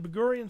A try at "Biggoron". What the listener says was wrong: Big Goron. Big Goron. No, you said Big Gorion.